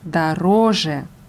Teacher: Die Betonung ist auf dem zweiten O, auf der zweiten Silbe. Das Suffix je ist unbetont.